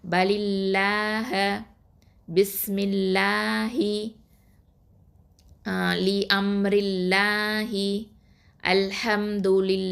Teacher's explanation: லாமுக்கு முன்னாடி உள்ள எழுத்தில் கஸ்ரா வந்துச்சு அப்படின்னு சொன்னால் அந்த லாமை மெல்லினமாக தான் ஓதணும். இப்போ உதாரணத்துக்கு பலில்லாஹ பிஸ்மில்லாஹி லி அம்ரில்லாஹி அல்ஹம்துலில்லாஹி இதிலவெல்லாம் பார்த்தீங்கன்னா அல்லாஹுங்கிற வார்த்தைக்கு முன்னாடி என்ன இருக்கும் அப்படின்னு பார்த்தீங்கன்னா கஸ்ரா பெற்று வரும்.